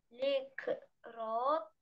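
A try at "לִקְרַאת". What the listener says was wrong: ликрат, тут нет о совсем, ликрат,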